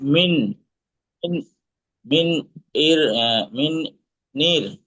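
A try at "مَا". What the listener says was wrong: মিন নাই, মা। মা মিম জবর, মা মিম জবর। জি, এই আলিফ বাদ, কারণ আলিফ তো খালি, আলিফ বাদ, আলিফের কোনো কাজ নেই, বাদ একদম, ওকে উড়িয়ে দেবো ইনশাল্লাহ।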